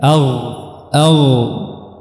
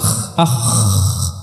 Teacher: ya jadi eh jangan dicampurkan antara kedua huruf ini Dan haruruf Gain dia makhrajnya lebih di dalam dan dia tidak memiliki sifat hams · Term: huruf Gain